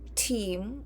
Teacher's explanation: in English, team, or whatever a word starts with a T, it is aspirated